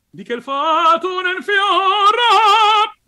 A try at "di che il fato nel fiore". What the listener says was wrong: Think, don't say oh, but think oh, because at the moment it's a bit I say in Italian sbragato, it's a bit open. And don't put this acciaccatura, do not make it too pronounced.